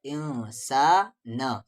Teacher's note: نون ساکن کے بعد سین ہے، اخفا ہوگا